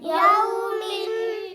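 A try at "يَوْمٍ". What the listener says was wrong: नाक में आवाज ना जाए यौमिन मिन मी ना मी यौमिन यौमिन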